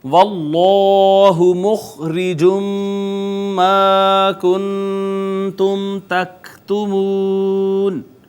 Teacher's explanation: واللہ مخرج ما کنتم تکتمون، یہاں ناظرین آپ دیکھیں کہ اس میں جلالت کا ما قبل مفتوح ہے، لہٰذا ہم نے اس کو مفخم یعنی پر کر کے پڑھا · پھر الف المدیہ الصغیرہ ہے، خا حروف مستعلیہ میں سے ہے، اور ادنا حلق اس کا مخرج ہے، را کے نیچے زیر تھی لہٰذا اس کو ہم نے باریک پڑھا۔